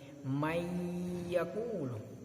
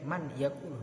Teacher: memasukkan suara non mati atau tanwin kepada huruf setelahnya dengan berdengung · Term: idgham bi gunnah